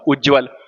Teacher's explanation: उत धन ज्वल। अगर त के बाद ज आएगा तो त बदलकर ज हो जाएगा।